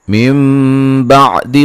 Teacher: यहाँ नून साकिन का इक़लाब है। नून को मीम से बदल के पढ़ेंगे गुन्ने के साथ।